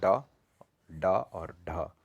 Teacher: तो मूर्धा से बोले जाते हैं ड, ड और ढ। मूर्धा यानी हमारे मुंह का जो कैविटी वाला पार्ट है, जो गड्ढे वाला पार्ट है, वहाँ से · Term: मूर्धन्य